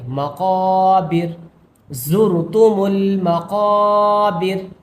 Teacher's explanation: وقف کی وجہ سے را کو ساکن کر کے پڑھیں گے